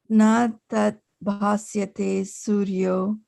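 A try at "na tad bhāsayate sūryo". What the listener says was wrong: Hold on. It's not sya, bhasayate. bhasayate.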